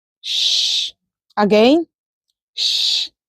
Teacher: the sh consonant speech sound is described as a voiceless post-alveolar fricative. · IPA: /ʃ/